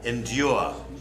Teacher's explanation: like with a Y in the middle, in like a liquid U, like a duke.